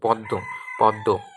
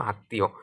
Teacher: শব্দগুলোর মধ্যে ম ফলা থাকলে সেই বর্ণগুলো উচ্চারণের দ্বিত্ব হয় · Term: দ্বিত্ব উচ্চারণ